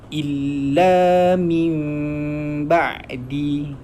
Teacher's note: Bila ada mim kecil, bermaksud nun tu dibaca dengan bunyi mim